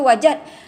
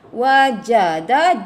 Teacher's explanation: Jim dengan dal tu kita jangan lekatkan dia satu. Dia terpisah ya.